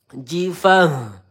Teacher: Pangkal tenggorokan huruf H.